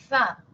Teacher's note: superiores e inferiores y soplar delicadamente no Esa es la interdental Por qué interdental Porque está entre los dientes